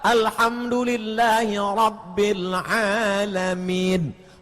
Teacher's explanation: Mana ada Rabb? Ra, tafkhim, tebal.